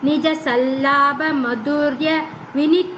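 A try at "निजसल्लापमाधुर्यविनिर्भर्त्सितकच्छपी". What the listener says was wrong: மாதுர்ய. மாதுர்ய இங்கிலீஷ்ல வச்சுட்டு இருக்கீங்களா? அப்ப மாது இருக்குமே தமிழ்ல.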